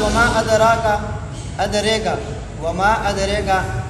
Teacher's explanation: ادریکا کے اندر امالہ دونوں راویوں کے لیے ہے